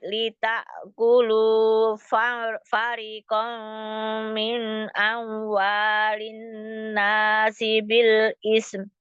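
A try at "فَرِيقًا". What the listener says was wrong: Itu fari, rinya itu mad ya.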